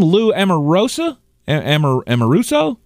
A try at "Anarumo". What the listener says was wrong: No, you're adding a syllable. It's Anarumo.